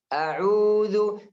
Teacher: Ain panjang karena setelahnya ada huruf waw. Huruf waw itu yang panjang, bukan ain. Jadi a'u itu waw yang panjang.